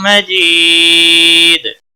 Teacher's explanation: جی یا مدہ ہے ایک الف کے برابر کھینچ کر پڑھیں گے. وقف کی صورت میں دال ساکن پڑا جائے گا اس پر قلقلہ بھی ہوگا